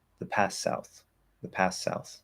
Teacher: I'm just doing straight S, no TH. Sounds fine.